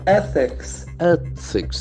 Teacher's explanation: the accent falls on the first syllable, ethics. The th sound is very prominent.